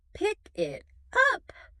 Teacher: >> It usually happens when a word ends with a consonant sound and the next word begins with a vowel sound. Instead of stopping, your tongue takes the consonant from the first word and slides it directly onto the vowel of the second word. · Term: linking